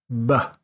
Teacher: when you go to say a b it would be B right your lips have to come together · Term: strong B sound